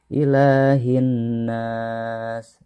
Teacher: Ilahin nas, sama yang selanjutnya hinnas, itu adalah alif lam syamsiah dan juga gunnah, maka harus jangan terbaca alif lamnya tetapi dimasukkan langsung ke dalam huruf nun karena ada tasydid, kemudian ditekan dan didengungkan 2 harokat.